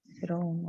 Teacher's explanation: we don't pronounce the ra of Fir'aun with tafkhim. We pronounce it with tarqiq, so we make it smaller, the ra.